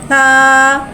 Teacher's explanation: सा नरमी वाला हुर्फ़ है, लिहाजा इसमें सीटी नहीं आएगी, इसको बगैर सीटी के अदा करके पढ़ेंगे।